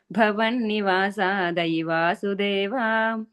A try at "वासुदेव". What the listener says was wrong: So there's no A at the end there, okay? Deva. It's not Va, it's just Vasudeva.